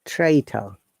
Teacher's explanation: In traitor, the second letter R is pronounced, but the last letter R is not pronounced at all because of the rules of non-roti British English.